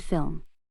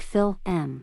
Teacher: H trying to correct their pronunciation the students were told to continuously make the L Sound until their mouth closed and then to make the M sound